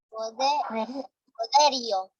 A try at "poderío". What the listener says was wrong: Tú estás diciendo en la E, en la I está. Poderío.